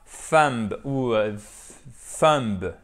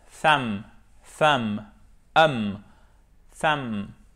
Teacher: B ne se prononce pas. Ne faites pas l'erreur de prononcer le B et ne dites pas thumb ou thumb.